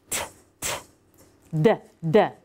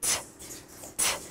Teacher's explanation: If I make a T sound or a D sound, the tip of my tongue is actually gonna go and lift and tap.